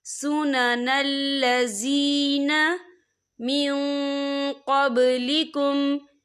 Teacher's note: یرید اللہ لیبین لکم ویہدیکم سنن الذین، یا دیکھیں سنن الذی، یہاں پہ یا مدہ ہو رہا ہے، یا ساکن ہے، یا ساکن سے پہلے زیر ہے، تو ہم اسے 2 یا 3 حرکت کے برابر کھینچ کے پڑھیں گے